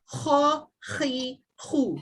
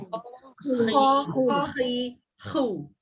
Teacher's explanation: Dia nak sebut huruf kha ni daripada atas halqum, dia kena ada macam efek nak keluarkan ha tu, ada bunyi kha dia tu.